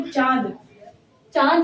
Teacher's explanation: चंद्रबिंदु के साथ इसका उच्चारण नासिका और मुख से होता है। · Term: अनुनासिक